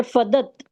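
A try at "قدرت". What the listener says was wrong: नहीं, फ नहीं है, दूसरा लेटर है, काफ है। देखो, कुदरत। कुदरत। अगर आइसोलेटेड आ रहा है, ऐसी शेप है और आइसोलेटेड है, आगे पीछे कनेक्टेड नहीं है, तब वो रे है।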